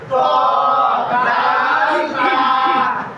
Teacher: জিহ্বার আগা 11 নম্বর মাখরাজ জিহ্বার আগা সামনের উপরে দুই দাঁতের গোড়ার সঙ্গে লাগাইয়া